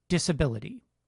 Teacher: consider the second vowel in the word disability. It sounds like [ə], and it‘s unstressed.